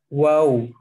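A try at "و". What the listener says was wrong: Monyong ditarik lagi. Ditarik lagi, Pak.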